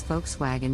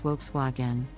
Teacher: the correct pronunciation is Volkswagen with the emphasis on the first syllable